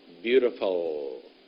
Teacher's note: don't make a w instead of an L